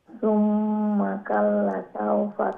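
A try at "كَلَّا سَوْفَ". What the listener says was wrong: কাল্লা, হ্যাঁ লা আবার লম্বা হবে, লা এক আলিফ লম্বা হবে, তো এখানে আলিফ মাদ্দা আছে না, লামের পরে আলিফ মাদ্দা আছে, হ্যাঁ কাল্লা সাউফা তা'লামুন।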